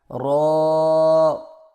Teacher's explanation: زبان کی نوک کی پشت کو اوپر والے دانتوں کے مسوڑوں سے لگا کر موٹی آواز میں پڑھیں، یعنی رو، میرے ساتھ پڑھیں، رو، رو۔